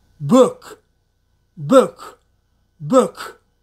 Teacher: your mouth a little bigger than the number one all right the last one k is also explosive sound but voiceless and again this letter comes at the end of the word